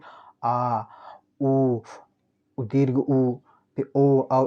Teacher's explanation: पश्च स्वर मतलब जो जिन स्वरों का उच्चारण करते समय जीभ का पीछे का भाग कार्य करता है, मतलब एकदम जो पीछे वाला भाग होता है।